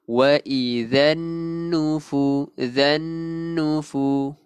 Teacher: huruf nun yang bertanda sabdu kita kena tekankan ataupun wajibul gunnah. Kita wajib dengungkan dia dua harakat. Jadi kena tekankan sikit.